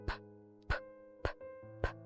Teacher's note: Percebam que ela é oclusiva, bilabial e desvozeada. · Oclusiva, ela fecha a passagem do som. Bilabial, ela tem o contato com os dois lábios, inferior e superior. Desvozeada, se você fala só p, aqui não tem som de voz em si.